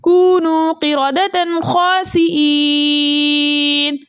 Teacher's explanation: یا مدہ کو 2 حرکت کی مقدار کھینچ کر پڑھتے ہیں، لیکن آگے نون کا سکون عارضی وقف کی صورت میں آ رہا ہے، اس لیے یہاں پر مد بنے گی مد عارض وقفی، جس کی مقدار 2 4 6 حرکت ہے، لیکن 6 حرکت کی مقدار کھینچ کر پڑھنا زیادہ بہتر ہے